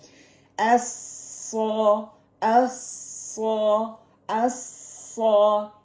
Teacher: tip of the tongue with the lower incisor, when the breath reaches the makhrij, the sound will hit the palate of upper incisor and comes out in between the upper and the lower incisor. صرف upper کے لیے نہیں ہوگا because زبان middle میں ہے نا، وہ upper and the lower incisor behind the lower incisor.